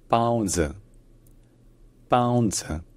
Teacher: c'est en fait la première consonne, c'est plus proche d'un P que d'un B. Ensuite, il y a une diphtongue pao et il y a un ton qui se maintient à un niveau haut, à un niveau assez aigu. · Déjà, c'est un ton qui est descendant et aussi, surtout, disons que c'est un caractère qui n'a pas vraiment de voyelle. Disons que c'est un z qui est syllabique, qui veut dire que c'est une consonne qui dure suffisamment longtemps pour durer une syllabe entière